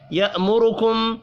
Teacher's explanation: را کو پیش کی وجہ سے پر پڑھیں گے